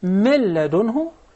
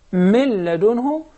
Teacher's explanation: we merged the noon completely in the following letter, which is the lam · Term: idgham without ghunnah